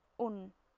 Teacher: double dhamma is pronounced as an u with an n at the end, like un. Double fatha would be an, and double kasra would be in.